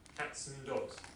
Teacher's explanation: In many cases, we'll just pronounce it N instead of and. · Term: weak form